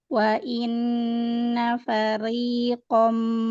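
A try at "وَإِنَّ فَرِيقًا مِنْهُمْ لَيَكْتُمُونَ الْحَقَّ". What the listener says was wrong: Tipisin lagi. Ri, bukan fari. Lembut lagi pangkal lidahnya.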